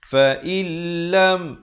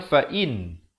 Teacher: Tapi bila datang lam, cara bacaannya ialah masuk tanpa dengung. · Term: idgham bila gunnah